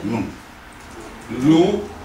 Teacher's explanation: It's not silent, there's a nasal sound. Eh, like it comes through your nose.